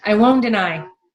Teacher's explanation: we know that T and D are made an exact same place so we just drop it